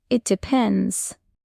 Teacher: Notice how the tone falls slightly on depends. · keep the T soft and the stress on pens. Say it smoothly, not stiffly.